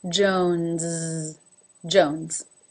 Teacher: notice that the S at the end is voiced